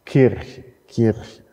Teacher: Also genau genommen müsste man es so transkribieren, mit einem palatalen K. In der Lautschrift ist es ein C, der palatale Verschlusslaut. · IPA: [ˈcʰiʀçə]